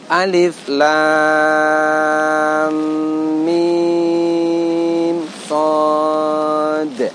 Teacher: Ketika kita mengucapkan shad, di akhir terdengar bunyi huruf dal, di mana dal punya sifat qalqalah.